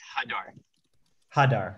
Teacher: So emphasis on the first syllable.